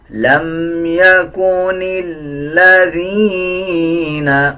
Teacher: نون کو لام کے ساتھ ملائیں گے، لام سے پہلے جو الف ہے اس کو سائلنٹ کر دیا جائے گا